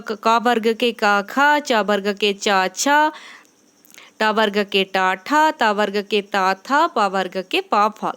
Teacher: ये पहला और दूसरा वर्ण ये अघोष संज्ञक होते हैं